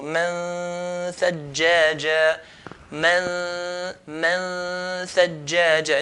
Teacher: Okay, and the roof of the tongue and where the tha is articulated from will come very, very close. Nun will be forgotten, will be hidden. So just the ghunna sound. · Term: ikhfa